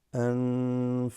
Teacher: this qaf has a qalqala, the noon there, followed by fa, is slightly ikhfa. أنفقتم, I extended that just to show you.